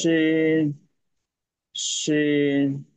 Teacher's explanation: আর এটা হবে সিন, এটা পাতলা, একদম পাতলা।